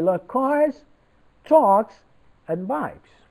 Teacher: in every item اون آیتم های لیستی که گفتیم و آخریه falling بود قبلی همه rising هست.